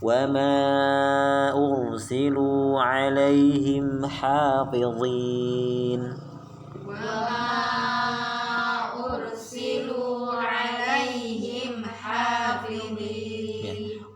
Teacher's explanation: Lu-nya panjang, tadi pendek. Lu panjang 2 harakat.